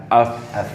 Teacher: Huruf fa itu bawah. di bibir bawah ketemu dengan gigi atas.